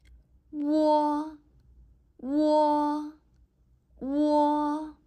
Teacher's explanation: This sound can be firstly produced by pronouncing the simple vowel u, and then followed by another simple vowel o. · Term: rising compound